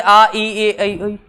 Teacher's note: जिन वर्णों के उच्चारण में होठ गोलाकार नहीं बनते हैं उन्हें अवृत्तमुखी कहते हैं। ठीक है, जैसे आ, ई, ए, ऐ, ये सब।